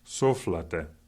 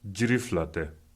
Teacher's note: Notice that the word te does not come up to the same level as either so, house, or jiri, tree.